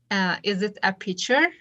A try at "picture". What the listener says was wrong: Picture. Okay, I want you to strengthen the k sound. Picture. A while ago, I heard you saying picture, not pick. That should be picture.